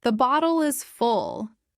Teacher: Full has a short u quick and closed.